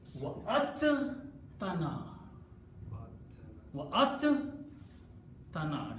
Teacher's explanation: You know, if you try to talk to a qari, he will tell you the makhraj of dal and ta, they both come out from the close to the teeth of the tongue. So instead of pronouncing dal and ta separately, we just pronounce ta twice.